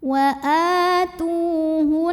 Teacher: Waw sukun didahului dhammah, maka taknya panjang 2 harokat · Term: mad tabi'i zahiri